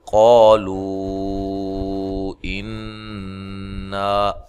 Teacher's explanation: پڑھیں گے تو یہاں مد جائز ہو رہی ہے، قالو انا، نون مشدد پہ غنہ ضروری ہے